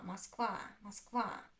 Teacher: Москва. As you noticed, I don't even pronounce O clearly. I pronounce it like ah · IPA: [масквА]